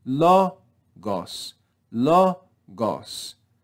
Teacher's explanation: Next we have the word logos, but we have an acute accent over the first syllable. So we're going to rise in pitch on the first syllable